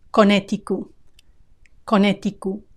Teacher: Many Spanish speakers are going to drop the final T.